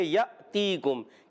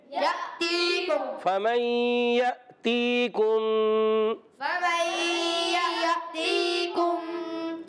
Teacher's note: اور یأتیکم، یا کو حمزہ کے ساتھ، یہ الف نہیں حمزہ ہے، اور جھٹکے کے ساتھ پڑھیں گے